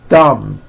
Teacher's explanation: My tongue came out, but there was never any air friction. That's not good.